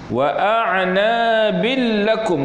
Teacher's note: Kita memasukkan tanwin ke dalam lam, itu maksud idgham bila ghunnah, dengan tiada dengung, tanpa dengung.